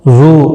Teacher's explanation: واو مدہ ہے ایک الف کی مقدار کے برابر کھینچ کر پڑھیں گے